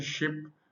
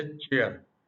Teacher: voiceless आपको पता है वो साउंड है जिसमें वोकल कॉर्ड जो है वो वाइब्रेट नहीं करते